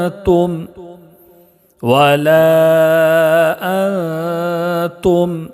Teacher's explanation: میم میں اظہار شفوی ہوگا، اس لیے کہ میم ساکن کے بعد میم اور با کے علاوہ عین ہے